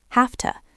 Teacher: the V in have often sounds like an F when it's followed by to.